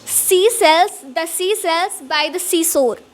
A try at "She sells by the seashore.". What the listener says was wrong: Shore. Just stress a little bit more. Not a lot, a little bit more stress. On shores or she, little bit more stress than you put on sa. S.